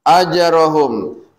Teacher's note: jim yang dimatikan dibacanya berpantul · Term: Qalqalah